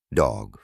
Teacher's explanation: Tercero, este sonido es representado por una C al revés. Este sonido es una O, larga y redondeada. La lengua se mantiene baja en la boca